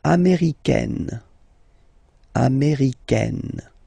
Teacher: Okay, it's really open, this A-I, américaine.